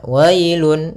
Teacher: di sini ada bacaan lin, yaitu pada lafal wa ketemu dengan huruf ya sukun, maka dia lembut dalam pelafalannya.